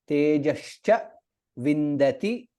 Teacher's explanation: We should be careful when we are saying tejascha. It is not sa, it is sha.